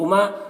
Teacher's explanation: یہاں پر الف مدہ ہے، ایک الف کے برابر کھینچیں گے